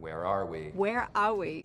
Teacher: There's an R there that shouldn't be there at the end of the word where